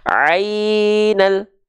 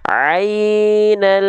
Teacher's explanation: yaqin harus tawasut Dia sedikit mengalir suaranya kita coba ainal tuh alnya terus jalan ya tanpa memutus suaranya